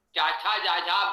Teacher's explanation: चाछा जाझा बोलेंगे तो जिह्वा तालु को स्पर्श करेगी